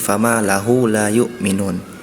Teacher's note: huruf mim sukunnya pelafalannya kurang terdengar jelas, sehingga terdengar seperti fama lahu la yu'minun.